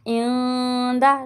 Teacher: نون ساکن کے بعد دال آ رہا ہے، یہاں پہ گنہ کریں گے